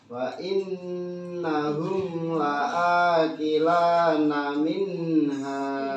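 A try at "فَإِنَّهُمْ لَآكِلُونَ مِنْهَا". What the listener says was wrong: Oke, salah sedikit, bukan la akila tapi la akilu.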